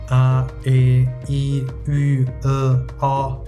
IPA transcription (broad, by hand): a e i y ø ɒ